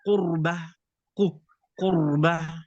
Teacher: sebelum ra ada dhammah dalam kalimat qurbah. Di sini ra ditebalkan pula.